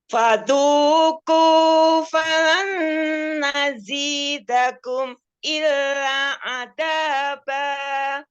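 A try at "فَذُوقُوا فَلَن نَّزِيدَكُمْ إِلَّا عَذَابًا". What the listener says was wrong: Illanya panjang ya. Tadi tidak dipanjangkan. Illa.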